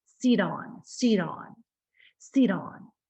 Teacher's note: I'm saying it in an American way with a flap sound.